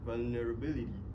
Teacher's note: T sound is pronounced as a quick flick or flat light T sound for American while British T sound